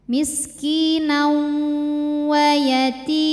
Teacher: cara bacanya tanwin lebur ke wau disertai dengung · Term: idgham bhunah